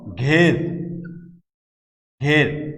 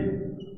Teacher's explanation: একাক্ষর শব্দের আদ্য এ বা একারের পর যদি র, ল, স ধ্বনির হলন্ত উচ্চারণ হয়, তাহলে আগের এই এ সংবৃত বা স্বাভাবিক উচ্চারণ হবে। যেমন ঘের, ঘের, র এর উচ্চারণ হলন্ত। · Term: সংবৃত এ